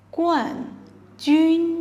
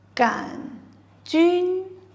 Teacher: champion is 冠军 with a u sound and a fourth tone. And rod-shaped bacteria is 杆菌 with no u sound and a third tone